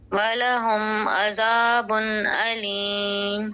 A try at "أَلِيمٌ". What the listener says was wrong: حمزہ کو آپ سختی سے ادا کریں گے، علیم.